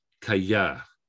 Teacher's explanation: And we've also got the stress on the final syllable.